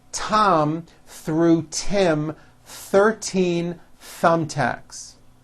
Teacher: with the th sounds all i can say about these is don't forget to stick your tongue out between your teeth and be sure to make a loud air friction sound